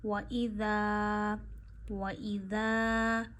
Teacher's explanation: ذال آپ بڑی ہی نرمی سے پڑھتے ہیں، آپ کی زبان کی نوک کے اوپر والا حصہ، زبان کا سرا اوپر کے دانتوں کے آخر پہ لگاتے ہیں اور بہت نرمی سے پڑھتے ہیں ذال